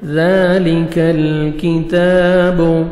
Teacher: ذالک، ذال کو مرکھڑی زبر ہے، 1 سیکنڈ آپ نے کھینچنا ہے۔ ذال کو نرمی سے ادا کریں گے، کاف کو باریک پڑھیں گے، لام کو آپ نے ہلانا نہیں ہے۔